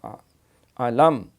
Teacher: پہلے علم تارا علام، میم کا کلکلہ نہیں کر، علم، اور علم بھی حمزہ کے ساتھ ہے، عین نہیں اس کو بنانا ہے